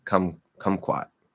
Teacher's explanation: Now, that second syllable is not stressed.